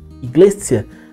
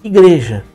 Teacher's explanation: O encontro consonantal que você vê em iglis e em iglesia foi transformado em igreja